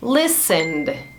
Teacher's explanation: Listened, com som de D no final